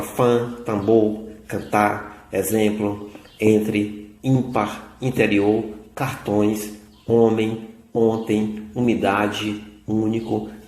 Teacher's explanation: Dos fonemas nasais. Deixando que o ar percorra também pelo seu nariz, nós produzimos esses fonemas